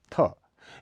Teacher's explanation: यह महाप्राण अघोष ध्वनि है इसका उच्चारण स्थल त वर्ण की ही भाति दांत है शब्द के आदि मध्य में यह महाप्राण बना रहता है लेकिन